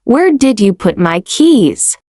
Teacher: Hear the fall at the end. That's natural for wh questions. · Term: falling tone